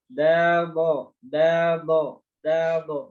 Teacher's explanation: Nah, bedanya da dengan do itu sebenarnya pada posisi tengah lidahnya. Kalau da itu tengah lidahnya dia di bawah gini posisinya. Tapi kalau do tengah lidahnya naik ya. Tengah lidah pangkal lidahnya naik.